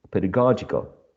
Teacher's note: there is a shift of the stress from the first syllable in pedagogy to the third syllable or syllable number three